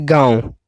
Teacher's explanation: अब आप गांव को बोलेंगे तो गांव, तो क्या नाक से भी हवा निकल रही है और मुंह से भी, जैसे दांत, आंगन, शांच, ये क्या है कि जब मुंह से और नाक से दोनों से हवा निकले तो इसे हम अनुनासिका कहते हैं